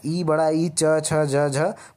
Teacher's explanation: जब भी हम ई बड़ा ई च छ ज झ बोलते हैं तो ये तालव्य से बोलते हैं, तालु से बोलते हैं